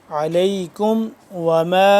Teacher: پڑھیں گے نعمت اللہ علیکم وما میم الف مد زبر ما اس کو لمبا کریں گے 2 سے 3 الف کے برابر